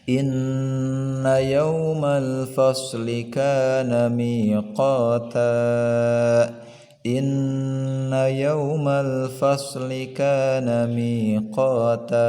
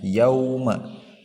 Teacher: In di sini gunnah lagi, yauma di sini ada waw sukun bertemu dengan harakat fathah ya. Waw sukun itu dilunakkan bacaannya yauma atau sedikit diayun yauma.